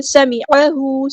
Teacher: سین کی سیٹیاں واضح کریں گے